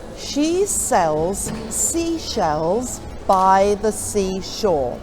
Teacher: It starts off with a sh sound for she, and then the next one is a s for sells, and then it mixes them up right the way through, so you get a good difference in the sounds. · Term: s and the sh sounds